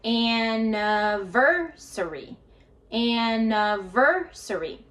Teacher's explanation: Notice that the stress is on the ver. So we're going to go higher, louder, and longer.